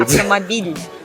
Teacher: Автомобиль. It's palatalized, the L